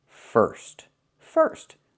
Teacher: I need to use a different sound. I need to use the sound like in burger. It's more closed. It's the pure R sound.